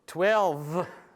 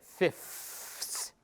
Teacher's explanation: It's not five, but fifth. So there's, the vuh becomes fuh, which in speech term, means it becomes voiceless